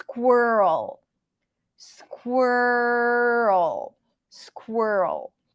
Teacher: a strong R and then an L so squirrel squirrel squirrel there is no e sound here it's all stir it's all reduced